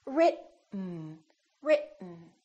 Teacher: when we have a t followed by an N the t is held so we hold our tongue right here behind our upper teeth and we don't release it we smoothly just go directly to the n Sound without moving · T and the N that are next to each other written keep your tongue up don't release it let the air just come out through your nose for the n Sound